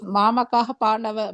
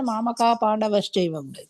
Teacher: సంధి చేస్తే కూడా విసర్గ లుప్తం అవుతుంది